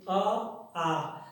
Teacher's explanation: अ और आ का उच्चारण स्थान कंठ है